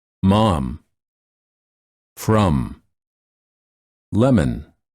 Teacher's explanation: spelled with the letter m mom from lemon for this sound the lips are together and the air flows out of the nose